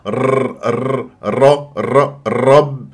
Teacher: راس اللسان الى وسط سقف الحنك الاعلى وهذا غير صحيح لان مكان قرع الراء مخرج الراء في المنطقه اللحميه ما بعد الثنايا العليا